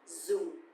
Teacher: because the tone mark here is dấu huyền, so it's going to be down a little bit